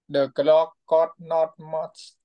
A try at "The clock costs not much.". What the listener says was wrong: bị thiếu chữ S này. Cost. Cost not much. The clock cost not much.